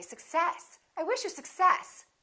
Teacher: in this case we stress the second part